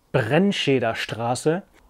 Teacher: authentic German R sound from the back of the throat · It has the German R in there at least twice, in Br and Str, the unusual ST sound, Sh, being like an SHT for us Brits